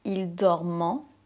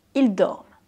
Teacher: Attention juste à la prononciation de « ils dorment », pas « ils dormant ». Ici, c'est la 3e personne du pluriel, donc on ne prononce pas le son « en ».